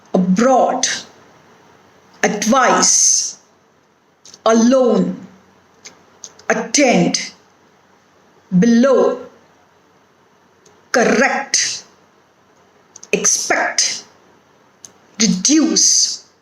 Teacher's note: Next rule is words with weak prefixes are stressed on the root of the word